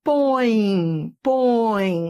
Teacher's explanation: esse e aqui ele é semivogal porque ele tem o som de i